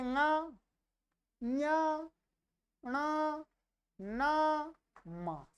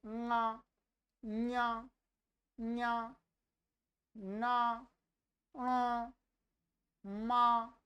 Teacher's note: यह अनुनासिक वर्ण है क्योंकि इनका जो उच्चारण है मुख और नासिका दोनों से होता